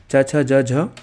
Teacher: च वर्ग जितने भी होंगे सारे के सारे तालव्य कहलाएंगे ठीक है उच्चारण स्थान उनका तालू कहलाएगा